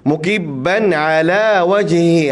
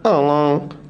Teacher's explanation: Pastikan kita baca dengan ain di wastal halqi.